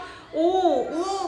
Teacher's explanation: 입술을 동그랗게 말아서 발음하잖아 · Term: 원순 모음